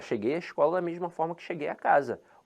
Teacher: é uma contração na Língua Portuguesa que não é marcada na fala